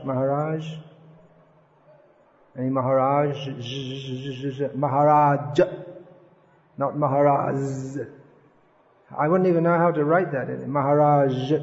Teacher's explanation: tendency in english is to drop the sound h but it should be pronounced